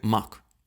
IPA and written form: mak (мак)